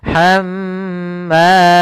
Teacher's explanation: ketika mim dan nun bertasydid itu kita tahan dulu. Kalau dia mim berarti tahannya, kalau nun berarti tahan nnya maka hamma tidak langsung dilepas hammalatal hab tapi tahan dulu hamma ya. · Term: gunah